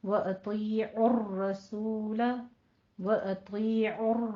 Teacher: और इसी तरह से वतीउ में तो के ऊपर आपने पुर भी पढ़ना है उसको, या मद्दा भी अदा करनी है। इसी तरह और रसूल में रो को मुफख्खम है, पुर पढ़ना है और इसकी नबर भी करना है थोड़ा सा।